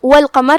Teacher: قاف کی ادائیگی زبان کی جڑ اور تالو کے نرم حصے سے ہے. قاف بھی حروف تفخیم میں سے ہے، لہذا اسے بھاری آواز میں ادا کرنا ہے. · کلمت والقمر یہاں لام القمریہ ہے، لہذا لام پہ جزم ہے تو ہم اسے ظاہر کریں گے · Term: حرف القاف